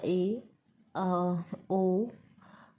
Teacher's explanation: जब मुख विवर कुछ कम खुला होता है अर्थात जीभ थोड़ी ही ऊपर उठती है तो उसे आधा बंद अर्ध संतृत कहते हैं। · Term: अर्ध संवृत